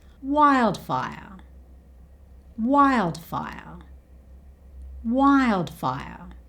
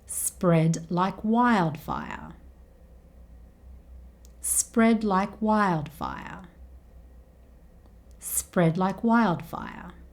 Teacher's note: Wildfire is the word here that ends with the R sound, so it's replaced with the schwa sound.